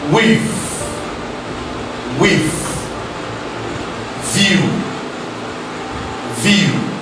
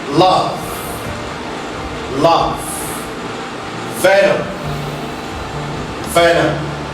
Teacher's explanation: the contact between the lower lips and the upper front teeth causes a partial obstruction to the flow of air. That is why it is called va sound.